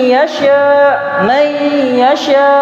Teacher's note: kita katakan nun ketika bertemu dengan ya. Nun itu tidak disebut sama sekali. dipindahkan ke ya.